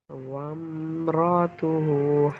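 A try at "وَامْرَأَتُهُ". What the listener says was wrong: वमरातुहु नहीं, वमरअ, रअ, रा ज़बर रा, हमज़ा ज़बर अ, रअ। वमरअतुहु हम्मालतल हतब। रातुहु नहीं, रअतुहु, रअतुहु।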